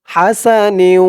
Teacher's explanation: হাসানি নিউ বলে গুন্না করতে হবে ইদগামে বা গুন্না